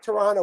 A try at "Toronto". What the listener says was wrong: No, there is no second T in Toronto. It's Toronto. Yeah, no, the natives don't call it that.